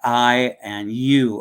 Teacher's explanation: I and U are double vowels or diphthongs. They're not pure